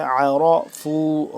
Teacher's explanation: عین زبر حلق کے درمیانی حصے سے عین زبر تھوڑا سا کھچاؤ پیدا کر کے زور لگ کے اس پہ یہ عین ادا ہوتا ہے